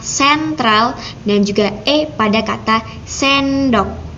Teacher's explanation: bisa dibaca E dengan mulut yang sedikit membuka, yang lebih membuka E, lalu bisa juga dibaca E. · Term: fonem E